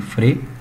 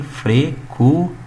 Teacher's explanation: esse EN, que é o nosso dígrafos vocálicos, ele nasaliza, tá? Ele é nasal aqui.